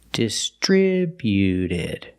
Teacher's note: When we add e d, the t at the end is between vowels. So, it's a fast d, not distributed, but distributed.